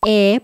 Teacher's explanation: es una vocal muy abierta, como una sonrisa